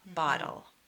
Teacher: the L-E sounds like 'el' and it adds a syllable to the word.